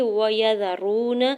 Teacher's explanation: وَيَذَرُونَ، یا کے زبر کو، واو کے زبر کو، یا کے زبر کو، زال کے زبر کو بغیر کھینچے ہوئے ادا کرنا ہے۔ واو ساکن سے پہلے پیش ہے را کے اوپر، تو یہاں پہ واو مدہ کا رول اپلائی ہو رہا ہے، دو حرکت کھینچ کے ادا کریں گے